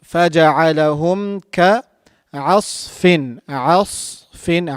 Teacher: We have to make sure that we're pronouncing sad in a heavy manner.